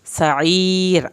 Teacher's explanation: کے ساتھ پڑھنا ہے، عین کو حلق سے پڑھنا ہے، سعیر آخر میں را جو ہے وہ پتلا پڑا جائے گا